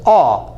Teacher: It's ah with rounded lips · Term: sound number 7